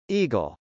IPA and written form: ˈigəl (eagle)